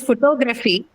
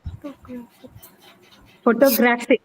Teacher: So since that is not the case, you cannot have aspirated ter in photographic. In photography, since the stress is on ter, you can take it as an aspirated ter, but not in photographic since the stress has now shifted to the next syllable. It is on graph now, not on ter.